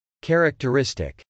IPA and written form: k.ɛrɪktɚˈɪstɪk (characteristic)